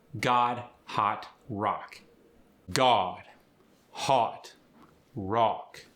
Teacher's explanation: The short O goes to an ah.